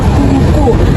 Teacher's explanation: huruf yang dihasilkan itu huruf u pada kata kuku Di mana posisi bibir membulat dan sedikit menonjol ke depan seperti sedang bersiur dan posisi lidah bagian belakang diangkat tinggi ke